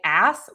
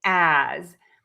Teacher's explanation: And this mistake is because many people say ass with an S. Yes, this word is spelled with an S, but we actually use the letter Z sound. So, we're going to say as in connected speech, which means in a sentence, in conversation, we often times don't use the a.